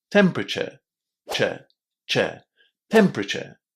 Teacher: We pronounce this ending in a very similar way to the word chair. The only difference is that the chair at the end of temperature is a little bit shorter.